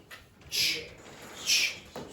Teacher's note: So that's an affricate sound where you have a t at the start and then a sh afterwards. So it's ch.